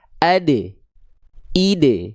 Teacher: Huruf dal harus mantul karena ada sifat qalqalah.